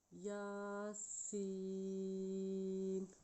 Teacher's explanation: یا کے اوپر کھڑی زبر ہے، اس کو 1 سیکنڈ تک لمبا کریں گے، سین کے اوپر مد ہے اس لیے اس کو 5 سیکنڈ تک لمبا کریں گے